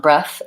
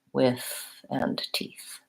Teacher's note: in the noun breath it's the voiceless like in with and teeth